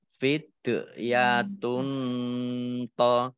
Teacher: Domah tanwin bertemu dengan huruf to bacaan ikhfa dibaca samar-samar · dal sukun ini huruf qalqalah dibaca mamantul ditampakkan pantulannya ya